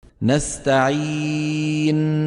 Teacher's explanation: المبالغة في إعطائها حقها من الغنة عند الوقف عليها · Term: زيادة عن اللزوم